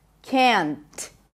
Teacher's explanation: this word is never reduced so even if it's unstressed in a sentence it's always going to have the pure vowel in it